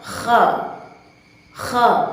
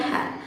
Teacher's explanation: Namun nafas yang dihasilkan ketika kita melafazkan huruf kha yakni adalah nafas yang keruh, nafas yang tidak bersih. Berbeda halnya dengan huruf sebelumnya yang telah kita bahas, yakni huruf ha yang dihasilkan dengan suara dan nafas yang bersih atau jernih.